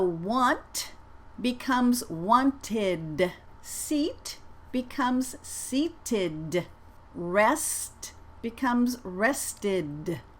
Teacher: d plus e d equals an extra id an extra syllable if the last sound of a regular verb ends in a t or a d the past tense has an extra syllable id